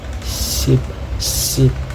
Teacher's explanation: Sounds like voiceless s, s, produced by placing the tongue tip near the alveolar ridge. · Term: alveolar fricatives